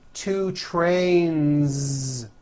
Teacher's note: two trains with a voiced Z ending